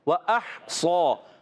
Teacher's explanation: ہا کو کلیئر رکھنا ہے حلق کے درمیان والے حصے سے، اور صاد کو موٹا رکھنا ہے